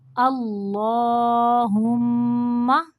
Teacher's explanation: ہما میم مشدد کا غنہ ہوگا